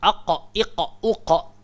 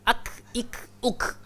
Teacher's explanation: Kaf dia ke depan sikit daripada pangkal.